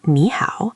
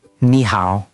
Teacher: with a third tone on nǐ and a third tone on hǎo